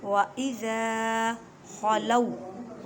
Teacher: خوا کو حلق کے اوپر والے سے ادا کریں